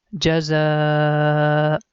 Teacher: za sound and also there is madda sign up there so we have to stretch za sound for five second